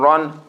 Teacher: Heaviness, giving the fatha an aw sound, and bringing the corners of the lips a little bit close together.